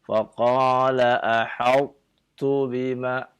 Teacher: Karena idgham. Setiap huruf qalqalah ketika dia idgham maka hilang qalqalahnya. Tapi masih ada sifat huruf ta-nya.